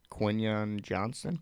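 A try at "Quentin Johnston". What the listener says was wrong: Johnston. There's a T in there.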